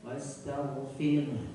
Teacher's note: ada aliran suara huruf h yang sangat tipis